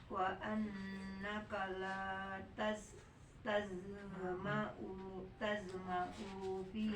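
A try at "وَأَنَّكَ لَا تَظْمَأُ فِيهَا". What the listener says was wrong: Nah, U-nya jangan dipanjangin. Tazma'u fiha, enggak ada sukun ya. Wa annaka tazma'u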